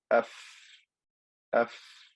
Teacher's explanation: the sound continues for a little bit. It doesn't just stop abruptly. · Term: rakhawa